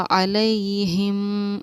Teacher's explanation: हिम पर गुन्ना इख़्फ़ा दोनों चीज़ें हमारी होंगी। हरकत, हरकत, यहाँ पर या साकिन से पहले ज़बर है तो इसको हम पढ़ेंगे हुर्फ़ लीन। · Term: इख़्फ़ा शफ़वी